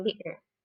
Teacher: Dan untuk di kata bitter di sini, dengan flap gitu, huruf R yang kebalik itu, nah di situ kita mengucapkannya dengan bitter.